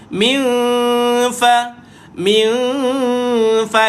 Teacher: kita punya gigi menyentuh dekat perut perut perut bibir bawah ni